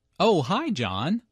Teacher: notice the rising intonation here is excited to hear from John